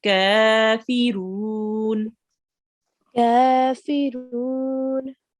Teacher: We have a fatah ishbaya. We will have to make the kaf for 2 seconds, prolong it for 2 seconds